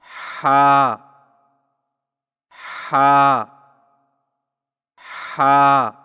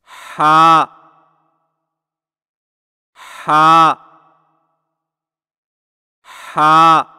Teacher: حلق کی طرف مضبوطی سے دباتے ہوئے باریک اور رگڑ کھاتی سانس میں پڑھیں